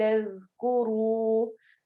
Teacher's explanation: ज़ाल नरम हरूफ में से है, इसमें सीटी की आवाज़ बिल्कुल भी नहीं आनी चाहिए और कुरू में वाव मद्दा, इसको भी हम थोड़ा-सा लंबा करेंगे।